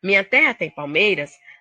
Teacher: A sílaba tônica da palavra palmeiras é um MEI, é uma paroxítona.